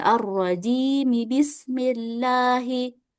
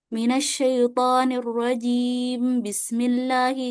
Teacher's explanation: Jangan langsung dibaca basmalahnya, tapi huruf mimnya harus dibaca kasroh dulu.